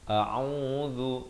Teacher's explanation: ain di pertengahan kerongkong dengan baris dhammah 2 harakat. A'udzu, zal di hujung lidah.